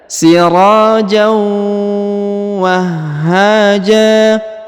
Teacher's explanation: huruf ha ya perhatikan ditahan dan ditekan karena di sini ada tanda tasdid · perhatikan huruf ro dibaca Dua harakat ya karena di depannya terdapat Alif